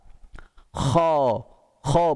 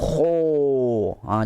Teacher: Dia buka besar. Kha. Kha bukan kho. Jangan muncungkan mulut kita begitu ya. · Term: huruf kha